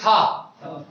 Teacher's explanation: जब आप ता बोल रहे हो, जब आप कह रहे हो था, तो लग रहा है कि आगे वाले दांतों पे जीभ मिल रही है, आगे के जो दांतों में जीभ मिल रही है। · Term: दंत्य